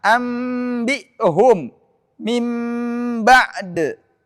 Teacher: nun sukun atau tanwin dirubah menjadi mim sukun murni min ghairi idgamin tanpa ada pengidgaman